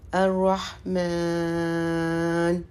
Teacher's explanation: جو یہ کھڑا الف ہے یا کھڑا زبر ہے اس کو ہم تھوڑا لمبا کرتے ہیں، 3 سے 4 حرکت دیتے ہیں